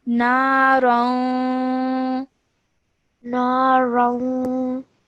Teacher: we must produce a 2-second partial nasal sound. So we would say this as narong.